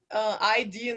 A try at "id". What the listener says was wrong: Id. Well, ID we pronounce it id. id.